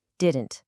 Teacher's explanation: Instead of saying didn't with a really sharp t sound at the end, a lot of native speakers kind of merge the d and n sounds. · The air kind of stops in your throat and then comes out your nose.